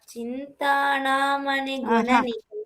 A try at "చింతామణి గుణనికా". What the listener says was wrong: చింతాణ కాదు, చింతామణి గుణనికా